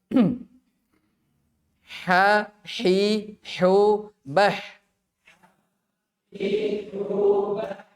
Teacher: Ini di wasatu al-lisan, wasatul halq ya. Dia berada di tenggorokan tengah. Jadi tadi ya sudah a di paling bawah, nanti ada ha di tengah.